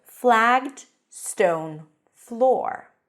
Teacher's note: the stress is on floor because that's the noun